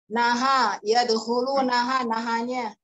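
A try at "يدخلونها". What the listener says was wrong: Jangan dipotong di situ. Jangan dipotong di situ. Tuh, kalau nahanya aja naha ainakumaha, naha. Jadi mungkin ini karena kesan ya, kesan yang timbul karena itu ya, karena penulisannya. Kesan yang timbul karena penulisannya.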